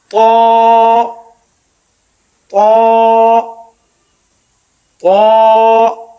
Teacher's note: زبان کی نوک جب اوپر والے سامنے کے دانتوں کی جڑ میں لگے، منہ کھول کر یعنی پر پڑھیں گے، اس کو تھوڑا سا موٹا کر کے منہ بھر کے پڑھیں گے، طا طا طا۔